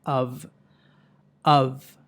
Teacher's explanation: ఈ పదాన్ని అవ్ అని పలకాలి. ష్వా ప్లస్ వి సౌండ్, అంతేగాని ఆఫ్ అని పలకూడదు. ఓకే, ఓ ప్లస్ ఎఫ్ కాదు.